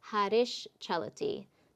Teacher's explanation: so your s becomes sha in front of CH